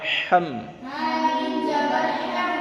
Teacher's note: ہا کے اوپر زبر ہے اور میم پر جزم ہے اور ہا کا مخرج نمبر 2 حلق کے درمیان سے